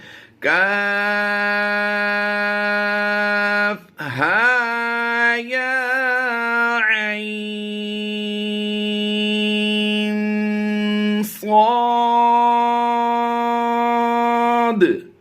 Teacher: عین کو پڑھتے ہوئے ہم نے اس لیے کھینچنا ہے کہ یہاں پر عین میں مد لین لازم کا قاعدہ ہوتا ہے